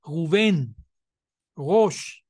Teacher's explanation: la pronuncian como la r francesa verdad con la glotis